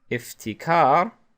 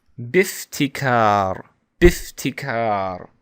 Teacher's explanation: the Hamza is pronounced because I'm not connecting it. But if I connect it with another letter, then it isn't pronounced. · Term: Hamzat al-Wasl